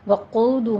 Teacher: قاعدہ، وقود میں قوف کو پر پڑھنا ہے، اوپر ضمہ ہے، واو مد ادا کیجئے دونوں ہونٹوں کو گول کرتے ہوئے، اور 2 کاؤنٹ کرنا ہے